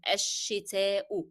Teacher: Here we have الشتاء, it is starting the sentence and we drop the sound of lam, it is followed by a shadda letter